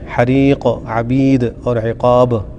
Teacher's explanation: آخری حرف پر قلقلہ ہوگا